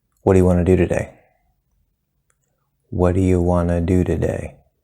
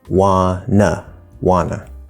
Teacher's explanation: In this sentence, we have wanna, which is a reduction of want and to combined. The T is disappearing, which is a connection rule, but notice we keep the from t, wanna.